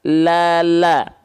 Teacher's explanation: Lam itu keluar dari tepi lidah bagian kiri ataupun yang kanan, ya, tepi lidah kiri atau kanan dua-duanya nih, bagian depan menyusur sampai ke ujung lidah, nempel ke langit-langit belakang gigi atas kita. Jadi kalau kita lafalkan itu terlihat lebih penuh. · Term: huruf lam